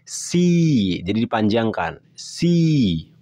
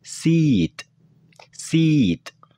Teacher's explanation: Cara pengucapan suara ini seperti halnya suara I dalam bahasa Indonesia. Namun pengucapannya sedikit lebih panjang saja.